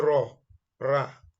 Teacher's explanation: Ra comes out when tip of tongue touches the upper hard palate at the front, similar to the English word raw.